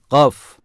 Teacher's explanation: dilin sonu damağa vurularak çıkarılır kalın aşikar ve sert okunur